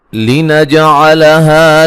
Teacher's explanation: جیم پہ قلقلہ کریں گے